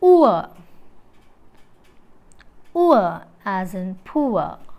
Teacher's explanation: During the articulation of the diphthong oor, the glide movement begins from a tongue position just above back half closed position